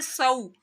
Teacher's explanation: صاد حرف مستعلیہ میں سے ہے، صاد کی سیٹی بھی نکالنی ہے